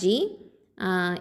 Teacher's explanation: ஜீம் கெசரா ஜி இது வந்து நடு நாவு எழுத்து